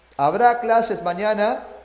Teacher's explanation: Como esta pregunta se responde con sí o con no, es de tono ascendente. · Ascendente, para arriba, cuando yo formulo una pregunta que se responde con sí o con no